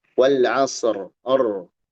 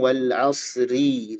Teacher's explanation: Ya liannaha maksurah karena dia kasrah. Jadi kalau berhenti rnya tebal kalau disambung rnya tipis.